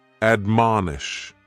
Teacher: admonish has 3 syllables, and the stress is on that second syllable, mon